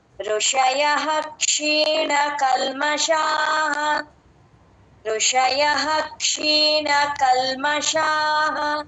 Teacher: ఋషయః ఆ య పక్కన విసర్గ పూర్తిగా చెప్తాం. ఎప్పుడైనా క్ష ముందు క్ష క్ష అనే అక్షరం ముందు విసర్గ వచ్చినప్పుడు ఆ విసర్గని ఫుల్ గా చెప్తాము పైన హ అని రాసేసుకోండి విసర్గ స్ట్రైక్ చేసి ఋషయః అః కచ్చితంగా క్లియర్